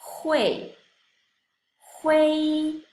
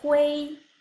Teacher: En el número 8, la final UI se pronuncia wei.